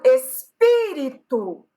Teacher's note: Tenho 4 sílabas, mas a sílaba tônica é a antepenúltima.